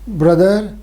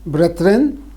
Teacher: back vowels were fronted due to the presence of a front vowel in a later syllable, as in brother plus n, brethren. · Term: umlaut